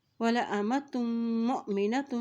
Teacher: اب تا کی تو پیش کو میم کے ساتھ ملائیں گے